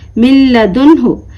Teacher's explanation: تنوین یا نون ساکین کے بعد اگر لام آئے تو ہم کس طریقے سے پڑھیں گے اس کو؟ اس کی آواز، جی ہاں، بلا غننے کے ساتھ